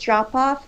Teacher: You stress drop more than off.